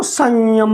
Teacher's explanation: यानी जो अनुस्वार बोला गया वह या के साथ बोलने के लिए तालु से ही बोला गया